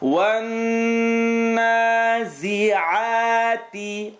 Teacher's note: Noon shadda, that's the full nasal sound.